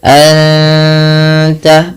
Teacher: Anta, anta, ya ada bacaan ikhfa hakiki, nun mati bertemu ta, 2 harokat sambil ditahan gunnahnya, sambil ditahan bunyi suara dengungannya.